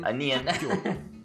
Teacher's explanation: So once more, whenever you have a base consonant, a double consonant, or a strong consonant, that's followed by another syllable that starts with a base consonant, that second base consonant becomes pronounced as a double consonant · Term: sound change rule